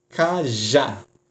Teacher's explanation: A sílaba mais forte é a última.